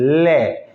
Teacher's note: जब इसका उच्चारण करते हैं ले का, तो दोनों पार्श्व, पार्श्व का मतलब किनारों से, दोनों किनारों से एयर बाहर निकलती है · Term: पार्श्विक व्यंजन